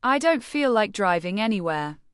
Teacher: Say it with slightly downward intonation to show finality, but keep it polite.